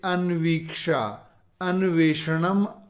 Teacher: अनु में जो ऊ है वो व में बदलता है और आगे जो स्वर है वो उसमें मिल जाता है